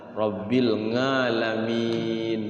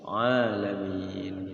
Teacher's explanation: Minimal tahu ketika ada ain itu jangan sampai dibaca nga, Rabbil ngalamin, jangan sampai seperti itu.